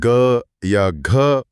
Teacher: यह जो गले में गूंज या कंपन पैदा होता है, उसी ध्वनि को सघोष कहते हैं।